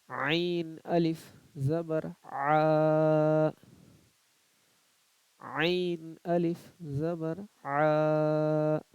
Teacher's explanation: جب آ بولیے گا تو اس میں تھوڑا محسوس ہوتا ہے کہ حلق پہ زور پڑ رہا ہے